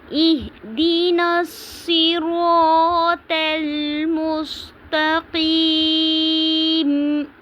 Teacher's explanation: نستعین، اہدنا الصراط المستقیم، اہدنا الصراط پہ الف مدہ ہو رہی ہے، تل مستقیم پہ یائے مدہ کیونکہ یا ساکن سے پہلے زیر آ رہی ہے۔ میم کو ہم وقف کی صورت میں ساکن کر دیں گے اور یہاں پہ مد وقفی یا مد عارضی کریں گے، تو اس کو ہم نے تھوڑا سا لمبا کر کے وقف کرنا ہے